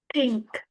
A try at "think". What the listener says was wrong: Think. So one thing for pronunciation is the th sound, right? Because yeah, I don't think this sound exists in Vietnamese, right? So usually I'll hear students saying ting, right, or ting, right? But it should be think with your tongue out, right?